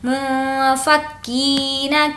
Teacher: کی یہاں پر یا مدہ ہے، کھینچ کر پڑھیں گے